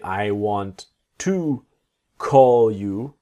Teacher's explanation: the word you will be like a yah sound